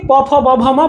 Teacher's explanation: আপনি প ফ ব ভ ম বলতে পারছেন না ঠোঁটে ঠোঁট না লাগিয়ে, তার জন্য এগুলোকে ওষ্ঠ বর্ণ বলে।